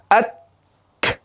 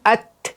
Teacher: ikkita tishni ildiziga orqasiga bosganimizdan, tortganimizdan havo bilan at deymiz, havo chiqadi dedik. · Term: Hams